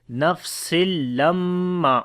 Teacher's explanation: Nafsil. After the tanween, the next is lam. We make idgham without gunna.